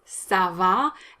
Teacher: both a's are strong a sound so it's not sava it's sava and the second one is longer because it's stressed